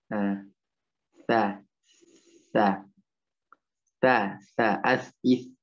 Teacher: Yang jelasnya sudah disempurnakan, ujung lidah mengarah ke gigi seri atau ujung gigi seri atas. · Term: huruf sa